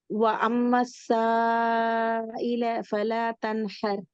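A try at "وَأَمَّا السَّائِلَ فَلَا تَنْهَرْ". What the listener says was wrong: இதுல பாருங்க, இதுல உங்களுக்கு வித்தியாசமான பிரச்சனை வருது. இந்த இடம் தானே? இந்த இடம் இப்ப உங்களோட உச்சரிப்புல ஐனு கூடிய மாறுது. அதாவது நாவினுடைய நடுப்பகுதியோ அல்லது நாவினுடைய இறுதி தொண்டையோடு வார பகுதியை நீங்க கொஞ்சம் தூக்குறீங்க. ஐல ரெண்டு தூக்குறீங்க. பிழை. இது முக்கியமான பிழை. நாவினுடைய எந்த ஒரு அசையும் வரக்கூடாது. ஈல ச ஈல ஃபல தன்ஹர்.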